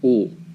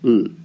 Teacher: In English, the L is made with almost the whole tongue at the top of the mouth, ol. However, L in Latin is pronounced with only the tip of the tongue touching near the top of the mouth